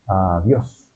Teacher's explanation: La O es la que lleva el tono más fuerte